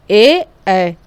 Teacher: कंठ तालव्य स्वर, यानी कंठ और तालु का प्रयोग जिसमें साथ में होता है